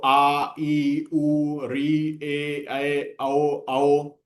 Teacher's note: दीर्घ स्वर क्या हो गया, 2 मात्रा का समय लगता है